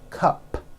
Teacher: It ends with an unvoiced P.